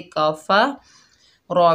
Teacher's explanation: रॉ के ऊपर पेश है, वाव साकिन है, रॉ को वाव साकिना से मिलाएंगे, वाव मद्दा है, एक अलिफ की मिक़दार खींच कर पढ़ेंगे और रॉ को पूर पढ़ेंगे